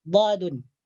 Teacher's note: Huruf dad keluar daripada tepi lidah, diangkat menyentuh gusi atas.